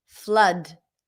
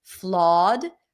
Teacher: This flood is a cup sound. Flawed is the A as in daughter or a as in father.